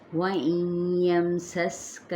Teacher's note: اب یہاں پہ بھی اسی طرح سے جو اوپر بتایا گیا تھا ادغام مع الغنہ کا قاعدہ، سین پہ سیٹی کو واضح کریں گے